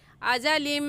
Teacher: मीम देखने में एक है और पढ़ने में 2 मरतबा पढ़ा जाएगा, एक मरतबा लाम के साथ मिलाकर और दूसरी मरतबा खुद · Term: इदगाम